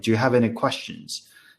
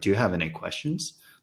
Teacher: oh, that's definitely a falling tone, right? Not a rising tone.